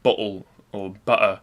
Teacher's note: like many british english speakers i often replace t sounds with glottal stops